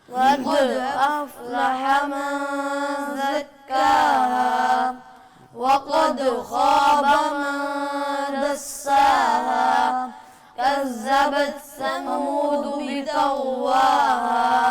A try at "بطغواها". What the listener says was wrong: طا کو موٹا کریں، بطغواہا،